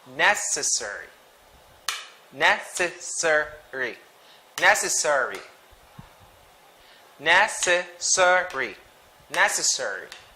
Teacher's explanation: So the stress is in the first syllable, necessary.